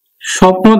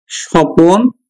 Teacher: উচ্চারণের সুবিধার জন্য মাঝে যদি একটা স্বরধ্বনি আসে তখন তাকে বলবো আমরা বিপ্রকর্ষ।